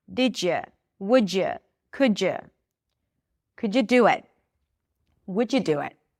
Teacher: Whenever there is a D and right after there is a Y sound, we get a J sound.